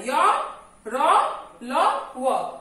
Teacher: जिन व्यंजनों का उच्चारण करते समय जिह्वा पूरी तरह मुख के किसी भाग को नहीं छूती, वो हो गया अंतःस्थ व्यंजन। इसका उच्चारण जो है मध्य व्यंजन के मध्य में होता है।